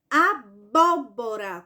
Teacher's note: Por quê? Porque a sílaba tônica dela, ou a sílaba mais forte, é justamente a antepenúltima · de trás para frente, a antepenúltima sílaba mais forte é a sílaba bo. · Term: proparoxítona